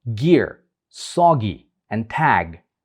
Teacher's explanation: the farthest back within the vocal tract is the velar sounds produced with the back of the tongue approaching the vellum or the soft palate